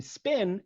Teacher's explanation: In spin, it's also a 1-syllable word, and P is unaspirated because it follows S. So S is the beginning of the word, P comes after that, no more aspiration, right?